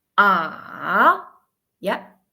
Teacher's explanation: First fallen and then rising. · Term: third tone